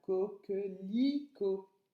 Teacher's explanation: on entend le son I sur la troisième syllabe